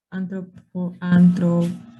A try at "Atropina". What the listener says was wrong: No, antropina no. Atropina.